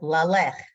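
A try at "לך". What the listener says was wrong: Not la lek. Don't change the vowel. You got the A vowel. Why are you changing it? Lay, lake. Lay, lake.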